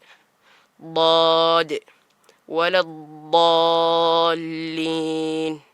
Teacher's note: ളാദിന്റെ ഉച്ചാരണം നാവിന്റെ ഒരു വശം ആ വശത്തോട് നേരെ ചേർന്നിരിക്കുന്ന അണപ്പല്ലിന്റെ ഉൾഭാഗത്തേക്ക് ചേർത്തികൊണ്ടാണ്